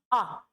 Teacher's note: मध्य स्वर में केवल एक होता है जो छोटा आ होता है, आ। ये बिल्कुल बीच वाले भाग से बोला जाएगा।